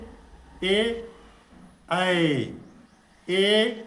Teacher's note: ए ऐ उच्चारण स्थान कंठ तालव्य कंठ और तालु से होता है।